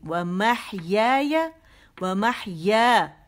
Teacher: ٹھیک ہے, ونسکی ومحیایا, ومحیایا نہیں کریں گے, ومحیایا, ومحیا, یہ لمبا ہے کیونکہ یہ مد اصلی ہے